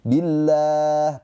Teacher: Lafaz Allah di sini dibaca dengan tarkik tipis